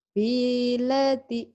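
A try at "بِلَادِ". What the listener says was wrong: Salah. Yang panjangnya mana? Biladi.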